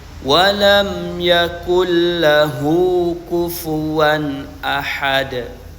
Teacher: mim sukun dibaca jelas tanpa ghunah